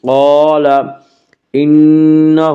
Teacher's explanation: نون مشدد غنہ ہوگا، غنہ کی مقدار ایک الف ہے۔